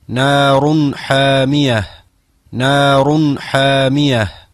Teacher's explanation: Sigurisht se edhe tenvini para shkronjës ha lexohet në mënyrë të qartë.